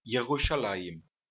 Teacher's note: o Sheva aqui não tem um som de A, de E, I, O ou U. É só um som bem curto. Não chega a ser uma vogal completa. É como, por exemplo, na palavra pagar, só que pronunciada por um português. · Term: Sheva vocal